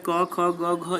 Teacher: क, ख, ग, घ, ये सारे आपको कंठ से निकलते हैं